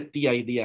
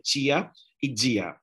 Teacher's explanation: no se dice tía y día en la mayor parte de Brasil, se dice chia y dia